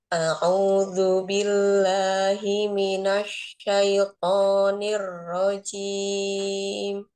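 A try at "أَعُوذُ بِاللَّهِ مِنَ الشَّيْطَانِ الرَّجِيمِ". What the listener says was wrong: ee huruf ainnya sempurnakan Umi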